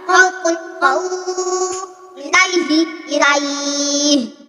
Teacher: setiap fathah diikuti waw atau ya sukun bertemu huruf hidup dibaca waqaf, panjangnya 3 alif atau 6 harokat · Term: mad lil